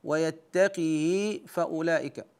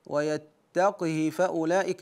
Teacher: قرا ورش بكسر القاف وصله الهاء